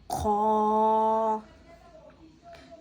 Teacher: خا کو ہم پور یعنی موٹا پڑھیں گے، جیسے کہ ہم نے اوپر پڑھا تھا خا حرف مستعلیہ میں سے آتا ہے، حرف مستعلیہ میں سے آتا ہے تو خا کو ہم موٹا پڑھیں گے، اور خا حرف حلقی میں سے بھی آتا ہے، حلق کے اوپر والے حصے سے ادا کریں گے۔